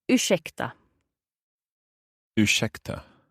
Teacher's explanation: This sh sound, that is the combination of the R and the S together.